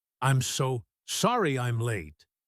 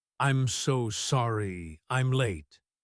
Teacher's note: When spoken quickly, the M sound in am flows directly into the L sound in late. Sounds like one long word.